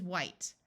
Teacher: H together in most of the US sounds like w but in some parts it sounds like H where the H sound is pronounced before a w rather than the H being silent